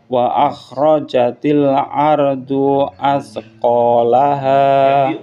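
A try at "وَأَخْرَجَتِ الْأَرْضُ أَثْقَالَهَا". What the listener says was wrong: Bunyinya jangan panjangan. Ardu as.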